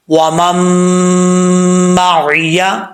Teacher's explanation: تو یہاں پہ غنہ کریں گے ایک الف کی مقدار